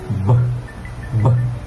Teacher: the lips come together and close completely to block the air flow